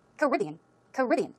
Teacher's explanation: The stress goes on the second syllable.